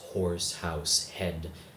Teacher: a very simple exhalation of breath that's pretty identical to the h sound we use in a lot of english words